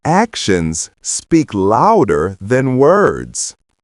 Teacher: Repeat that phrase and try to match my intonation and rhythm. Remember, the stress falls on actions speak louder and words